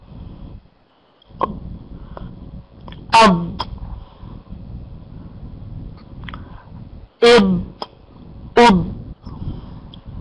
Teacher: الضاد من طرفي اللسان مع ما يحاذيه من الحنك الأعلى، ولا تأتي بقلقلة الضاد